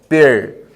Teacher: Você vira a ponta da língua para trás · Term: R retroflexo